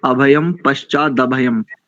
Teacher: प्रथम दोनों अनुस्वारों को मकार उच्चारण करेंगे